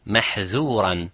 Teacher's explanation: So dhal has infitah, which means you do not use both the sides of the tongue. You use only the tip of the tongue.